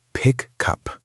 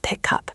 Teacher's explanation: It becomes pick cup. The final sound of one word jumps into the next word. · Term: linking